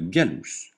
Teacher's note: le G se prononce gu comme dans gorille jamais je comme dans singe